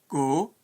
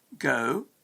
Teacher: as in the word go with a monophthong rather than go with a diphthong